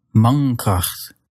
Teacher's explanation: And so instead, you'll make the N using the back of your tongue